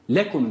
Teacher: ikinci lamı telaffuz ederken hafif bir vurgu yapıyoruz yani şu lekum derken lekum kelimesinin lamı cale ile beraber değildir